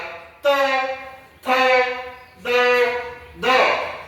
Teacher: याच उच्चार स्थान आहे दंत्य म्हणजे दातांचा वापर करून